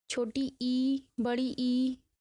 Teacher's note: अग्रस्वर जीभ के अग्रभाग से उच्चारित स्वर